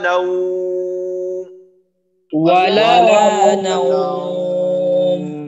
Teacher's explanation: নাউম বলার সময় যেন নাও নুনের উচ্চারণটা লম্বা হয়ে না যায়, অর্থাৎ না না না হয়।